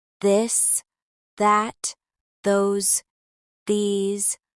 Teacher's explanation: For both, the tip of your tongue comes out slightly between your teeth. For the voiced th your vocal cords vibrate